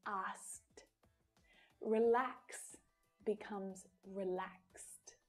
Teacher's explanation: verb in its infinitive form ends in an unvoiced consonant sound we pronounce the Ed d as a t so not ID not D but T TT so that is